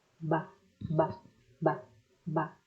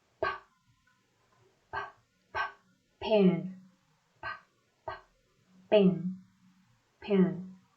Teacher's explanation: They already have similarities in the way the sound comes out. The difference is that one has vibration and the other doesn't.